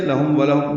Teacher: ہم میں میم ساکن پہ اظہار شفوی ہے